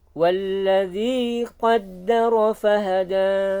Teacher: Walladzi, zi-nya sama, panjang 2 harokat. Qaddara fahada, dalnya ada tasydidnya, jangan lupa ditekan. Fahada. Nah, fahada berarti dia di bawahnya di akhir ayatnya dia 2 harokat saja ya, jangan terlalu panjang.